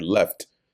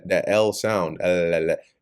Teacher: That L l that L sound. L your tongue has to actually touch the roof of your mouth